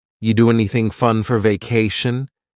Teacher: word anything you do anything fun we link together doing because we're going to drop the G it ends with the sound n the n Sound and then the next word anything we sometimes drop the A